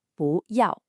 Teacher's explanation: The character boo is usually a fourth falling tone. But when it comes right before another fourth tone like yao, it magically changes to a second rising tone.